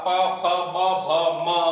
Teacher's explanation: बोलने के लिए होठों का टकराना ही पड़ेगा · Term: पे वाली लाइन